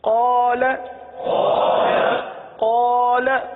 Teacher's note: لام پر بھی زبر ہے، لیکن لام کے ساتھ الف نہیں ہے، لام کے ساتھ حروف مدہ نہیں ہے، اس لیے لام کو نہیں کھینچیں گے۔ تو پتہ چلا قاف کو 1 الف تک کھینچیں گے، لام کو چونکہ زبر ہے تو زبر زیر پیش کو بغیر کھینچے بغیر جھٹکا دیے معروف پڑھتے ہیں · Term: الف مدہ